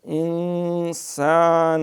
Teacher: سین ذرا اہتمام سیٹی مار کے